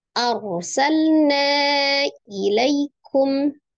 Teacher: Arsalna, lamnya sukun, jangan lupa sifat huruf lam adalah antara sidda dan olgha ya, tawassut atau bainiyah, mengalir sebagian. Lam sukun hati-hati tidak dipantulkan.